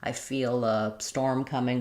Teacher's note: I'm just linking that L and my light L jumps back in. I don't really need the dark L comes in.